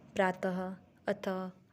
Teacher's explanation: विसर्ग का उच्चारण हौ की तरह होता है।